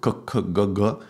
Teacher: K and G, they are both produced in the throat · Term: guttural sounds